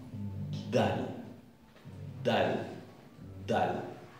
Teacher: Esta es oclusiva y de golpe se suelta.